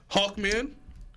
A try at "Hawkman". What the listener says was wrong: Hawk or Hulk? Because it sounds like you're saying Hulk.